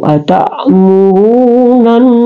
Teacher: Nun kembali nun di sini dia juga adalah toful lisan, ya keluar di ujung lidah, cuma dia bertasdik, makanya dia adalah gunnah, didengunkan